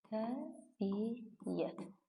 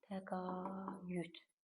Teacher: Tələffüz zamanı iki saitin arasına biz y artırırıq.